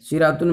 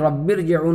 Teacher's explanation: شرعتن میں را باریک پڑھی جاتی تھی، لیکن رب ارجعون والی را جو ہے پر پڑھی جائے گی، ارجعون کی را جو ہے، رب والی را تو پر پڑھی ہی جائے گی، اس لیے وہ را متحرکہ ہے، اور را متحرکہ پر فتح ہے، لہذا جو ہے وہ پر پڑھی جائے گی۔